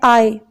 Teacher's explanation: ठीक है, तो डिफ्थोंग भी वोवल साउंड है। जब इनको प्रोड्यूस करते हैं तो किसी किस्म की कोई हिंड्रेंस ब्लॉकेज नहीं होती, लेकिन हमारी टंग जो है वो ग्लाइड करती है, मूव करती है।